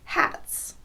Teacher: if the S occurs after a voiceless consonant, then it will be pronounced s